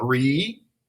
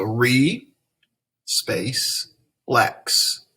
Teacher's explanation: the first syllable is open and it has a long vowel sound